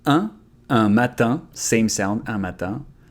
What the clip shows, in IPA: ɛ̃ matɛ̃